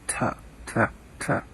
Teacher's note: So the way I think that this ought to be pronounced best, and people are going to differ on this, is with the mouth, with the teeth closed, and not very much breath, just a t, almost like a D, between a T and a D. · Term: tau